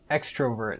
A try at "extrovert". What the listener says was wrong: I think people say extrovert, like just a little, I don't think they emphasize the O so much